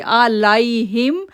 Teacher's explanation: لئی نہیں پڑھیں گے، لین لیٹر ہے، لائی پڑھیں گے